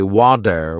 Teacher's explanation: I noticed that native speakers say water with a soft d sound.